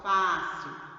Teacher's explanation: Fá, sílaba tônica fá, acento agudo, som aberto.